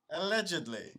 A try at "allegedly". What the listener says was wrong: Yeah, but you got to put more emphasis on the alleged.